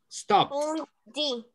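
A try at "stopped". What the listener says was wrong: Stop. Like T. T sound. Stop.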